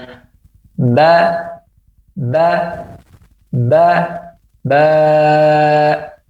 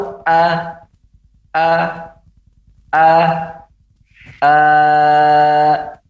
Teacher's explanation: Wa huwa al-maddu bimiqdari salati harakat, yaitu memanjangkan dengan takaran ukuran kurang lebih ya 3 harakat atau 1 alif setengah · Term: fuwaiqu qasrin